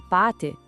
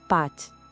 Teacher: o acento indica um som um pouquinho mais longo, pâté. E para a gente fechar, vamos falar de duas outras marcas.